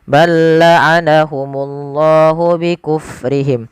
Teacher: Him ada bacaan izhar syafawi dengan jelas mimnya